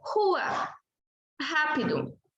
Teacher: O R representa o fonema chamado R forte, pronunciado na garganta